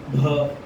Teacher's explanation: दोनों आवाज, हा और बा की आवाज सेम टाइम में निकले